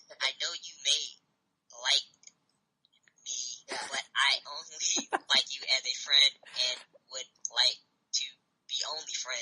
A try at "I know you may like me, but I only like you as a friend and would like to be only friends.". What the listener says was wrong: Just a little faster so it sounds like an actual sentence.